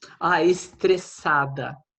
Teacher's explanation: So it's an S sound there, not a Z sound. for ES. Yeah, when S is after the vowels, sounds like S always, like in English.